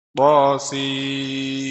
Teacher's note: akhirnya mim bukan nun, sim karena idgham kamil